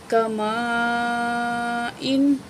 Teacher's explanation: بڑی مد ہے، 4 الف کے برابر کھینچیں گے